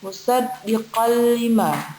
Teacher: maka dilebur tanpa dengung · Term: idgham bila gunnah